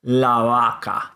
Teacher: So vaca, cow, starts with a V, but we say vaca. But if you put the article in front of it and say the cow, then you say la vaca, and your lips don't touch. La vaca, because of the A from the previous word.